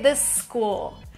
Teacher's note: It's like one S, but it's a little longer. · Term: linking